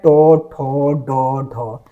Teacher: ये सभी मूर्धन्य ध्वनि है